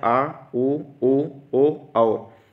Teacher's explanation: जिह्वा के पश्च भाग को उठाकर उच्चारण करना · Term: पश्च स्वर